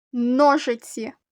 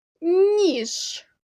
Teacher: у словах другої пари предметів послухайте як я вимовляю звуку н у першому слові ножиці правильно твердо і у звуковій схемі це звук позначено однією рискою а у другому слові ніж правильно м'яко у звуковій схемі це звук позначений двома рисками приголосний звук який